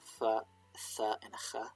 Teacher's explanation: the aspiration in some dialects was tending towards frication, becoming fricatives